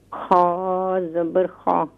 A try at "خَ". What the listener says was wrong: خا کا مخرج کیا ہے اما جی؟ خا کا مخرج کیا ہے؟ نہیں ہے, یہی تو مسئلہ ہو رہا ہے. Top of the throat. ہاں ادنا حلق. ادنا حلق جو ہوتا ہے وہ میڈل آف تھروٹ نہیں ہوتا ہے, وہ ٹاپ آف دا تھروٹ ہوتا ہے. ہاں ادنا سے, ماشاء اللہ.